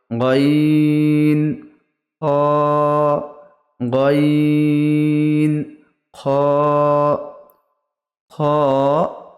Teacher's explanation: হালকের বা কণ্ঠনালীর শেষ বা উপর হতে উচ্চারিত হয় গইন খ, গইন খ। খ এক আলিফ, গইন 3 আলিফ।